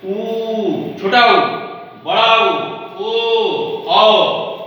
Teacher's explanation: जब स्वर के उच्चारण में जिह्वा का पीछे का भाग कार्य करता है या क्रियाशील करता है, उसको बोलते हैं पर्श्व स्वर।